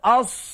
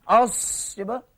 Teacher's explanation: Ertinya angin katanya terlepas ketika menyebut huruf sad ini kerana beramal dengan sifat hamas. Hamas ertinya dilepaskan udara.